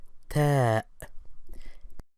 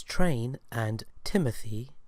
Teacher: However, unlike the T, which is quite thick and heavy, in words such as train and Timothy, the Arabic ta is light and soft, produced by placing the tongue beneath the upper front teeth